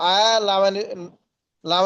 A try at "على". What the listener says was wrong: আলা, আলা আইন তাড়াতাড়ি ভাই, আইনটা একটু তাড়াতাড়ি, আলা